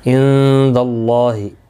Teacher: عند، نون ساکن کے بعد حروف اخفا کا دالہ اخفا حقیقی ہوگا. اللہ کا لام زبر کی وجہ سے پور پڑھا جائے گا، اس کے اوپر کھڑی زبر بھی ہے، ایک الف کی مقدار کے برابر کھینچ کر بھی پڑھیں گے.